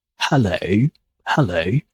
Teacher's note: So you can hear that a little W appears at the end